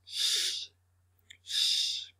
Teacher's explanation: It comes first of all from the tongue up behind the top teeth, letting the air escape around the tongue and teeth.